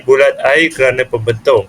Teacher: Okey, yang ketiga ialah diftong, di mana yang berada dalam rangkap yang kedua baris yang ketiga, yang berbunyi bulat air kerana pembentung. Perkataan air itu terdapat diftong di dalamnya, iaitu AI.